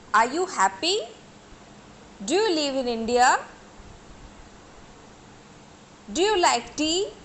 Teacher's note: But regarding intonation, our tone is rising, right? Our pitch of the voice is rising. We are not giving emphasis on any particular syllables or words. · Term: rising tone